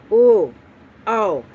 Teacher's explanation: अब हम समझेंगे कंठोष्ठ, यानी कंठ और ओष्ठ दोनों से निकलता हो आवाज़, जैसे कि ओ, औ, ये दोनों क्या है, कंठ से भी आवाज़ आ रही है और होठ को क्या कर रहे हैं, हमको गोल करके ही पढ़ना पड़ रहा है, तभी जा करके ये हो रहा है, कंठ और ओष्ठ दोनों, कंठोष्ठ हो गया ये।